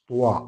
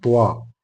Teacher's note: ത്വാ എന്ന് പറയുമ്പോൾ നമ്മുടെ നാവിന്റെ സെൻട്രൽ ഭാഗം അല്പം താഴ്ന്നുകൊണ്ട് ത്വാ, നാവ് വളച്ചുകൊണ്ടാണ് നമ്മൾ പറയാറുള്ളത്. ത്വാ, അത് വായ നിറയെ ശബ്ദം വരുന്ന രൂപത്തിലാണ് ത്വാ പറയാറുള്ളത്.